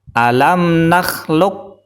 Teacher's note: karena depannya ada Kaf maka qolqolahnya hilang